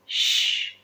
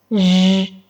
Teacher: Recuerda que un fricativo ocurre cuando dos órganos están súper cerca, pero no se tocan, no se bloquea el aire por completo. Para hacer estos sonidos necesitamos la parte media de la lengua prácticamente elevándose hacia la parte postalveolar. La punta de la lengua no toca nada y los labios salen un poco hacia afuera. Con esta solo es aire. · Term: fricativos